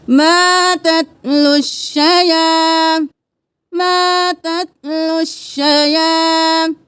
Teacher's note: لام کو ڈائریکٹ شین کے ساتھ ملائیں گے اور پھر شین کو 2 بار ادا کریں گے کیونکہ تشدید ہے